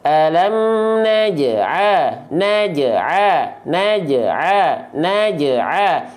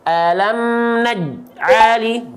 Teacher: Pantulan yang kecil, ringan atau lemah, maka kita pantulkan secara ringan saja. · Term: qalqalah sugro